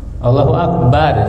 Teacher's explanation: Allah itu tafhim Allah dan tidak boleh a-nya dipanjangkan Allah enggak boleh karena kalau a dipanjangkan di situ ada tambahan huruf hamzah lagi.